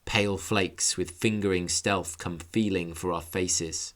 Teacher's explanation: look at the repetition of the fricative F sound